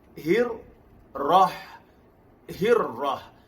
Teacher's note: huruf ra ialah takrir, bergetar pada satu getaran.